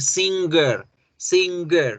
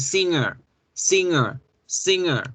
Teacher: se come a la g y la g no suena